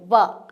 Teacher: होठों से बोला जाता है देखिए बोल कर देखिए व कि हमारे जो दांत है वो होठों के ऊपर आते हैं तब व का उच्चारण होता है